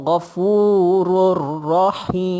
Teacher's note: Tanwin tu masuk dalam ra. Bila tanwin tu hak itulah baris dua tu. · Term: idgham bila gunnah